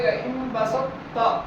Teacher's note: ہمیں اس تا کو تھوڑا موٹا کر کے ادائیگی کرنی ہے، ادغام ناقص کرنا ہے